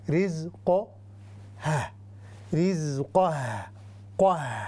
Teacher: اب قاف ہیوی ہے لیکن اس کے ساتھ جو ہا ہے اس کا اور حق ہے، اس کا حق ہے اس کو باریک پڑھیں